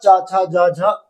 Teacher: हमारी जीभ तालू को स्पर्श करती है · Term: तालव्य वर्ण